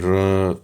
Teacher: अब जैसे अपन र को बोलेंगे र, तो ऐसा लगेगा ना, आपको फील होगा मुंह के अंदर वाइब्रेशन हो रही है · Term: लुंठित